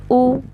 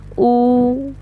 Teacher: Dhamma is generally u 1 count, but dhamma plus waw sukoon, u. So I lengthened it. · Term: mad